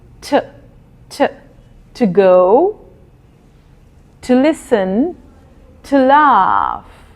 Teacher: Sometimes it is pronounced as t. The sound is only of the t. You do not say the O.